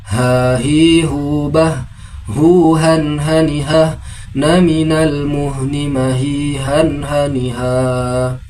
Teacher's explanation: Huruf H makhrajul hurufnya berada pada pangkal tenggorokan seperti huruf H. Terasa ada aliran nafas dari hidung namun tidak berlebihan. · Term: huruf ha